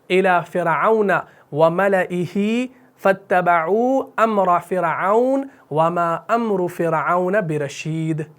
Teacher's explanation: تینوں ناموں کے اندر آپ نے را کو کیا کرنا ہے؟ باریک پڑھنا ہے